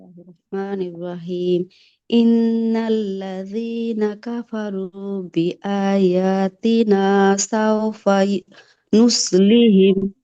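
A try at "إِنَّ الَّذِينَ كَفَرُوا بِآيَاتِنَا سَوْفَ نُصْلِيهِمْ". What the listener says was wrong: মাদ্রাসা, লামের মাপটা ডিলিট হয়ে গেছে। আবার পড়েন আপনি।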